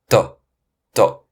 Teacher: the chinese d is unvoiced and unaspirated